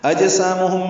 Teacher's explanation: اجسامہم میں جیم ساکن پہ قلقلہ ہے. سا الف مدہ ہے.